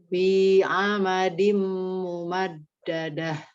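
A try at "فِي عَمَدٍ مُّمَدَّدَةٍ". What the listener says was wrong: Pas baca mumat, nah mumat dadah itu agak sedikit, agak lidahnya nempel.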